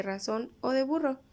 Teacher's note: l vibrantes las vibrantes se forman con la vibración del articulador si hay vibraciones sucesivas es decir que la vibrante es múltiple